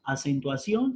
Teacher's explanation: acentuación tiene cuatro sílabas la sílaba ción es la sílaba tónica